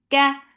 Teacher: kaf is light. There is no hums when there is fatha